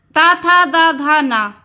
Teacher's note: दंत मतलब दांत, ऊपरी दांतों के निकट से। ता, था, दा, धा, ना, ऊपर का हमारा जो जबड़ा होता है, अग्रभाग होता है दांतों का, तो वहाँ पर जब हमारी जीवा टच होती है तब हमारा ये वर्ण निकलता है ता, था, दा, धा और ना।